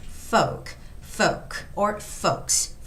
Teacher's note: when you read the word folks, you got to leave out the sound of L. So it's not forks, but it's just folks.